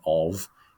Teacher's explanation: v like that because when we actually say the preposition of it's actually a voiced sound it's a voiced consonant that we put on the end